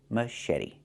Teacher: The t makes a fast d.